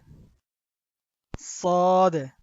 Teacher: এটার উচ্চারণ আমরা জিহ্বার আগা থেকে করব, একটু চ্যাপ্টা করে